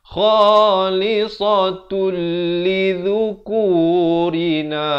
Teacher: Tanwin bertemu lam. Asalnya khalisatun. Tapi bila datang lam, masuk tanpa dengung. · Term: idgham bila gunnah